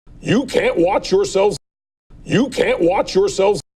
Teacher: he says yourselves yourselves stressing the first syllable